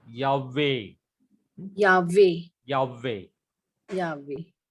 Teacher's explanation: ते सायलेंट हे जो आहे ना, तर त्याच्यामुळे तो वॉवेल जो झालेला आहे तो लॉंग वॉवेल झाला